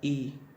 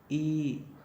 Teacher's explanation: तो ई का बोलने में अगली जीभ हमारा काम करती है। ई तो वो दांतों में लगती है, जिसे कहते हैं दंतमूल।